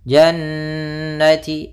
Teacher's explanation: ada bacaan gunnah pada lafal nun yaitu ditandai dengan nun berharakat tasydid. Caranya adalah ditahan dulu gunnahnya. Panjang 2 harakat.